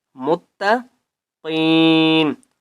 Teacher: قاف کو ہم نے موٹا کر کے پڑھنا ہے، اور قاف کے آگے یا ہے، اس لیے ہم نے قاف کو 1 الف کی مقدار کھینچ کر پڑھیں گے۔